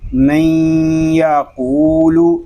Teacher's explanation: ادغام یار معلوم اس لیے ہو رہا ہے کہ نون ساکن کے بعد حرف یار معلوم میں سے یا آ گیا ہے۔ اب ناظرین یہاں ایک تو ادغام یار معلوم ہو رہا ہے اور دوسرا ادغام ناقص ہو رہا ہے۔